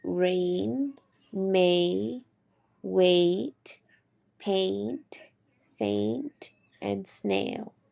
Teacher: Our lips are spread more during the glide towards e. Our jaw is lower than I and rises during this glide and our tongue is in the middle front gliding up towards e. This is considered a tense phone. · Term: tense phoneme